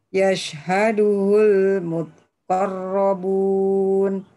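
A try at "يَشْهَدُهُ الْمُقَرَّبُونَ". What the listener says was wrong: Bukan ha.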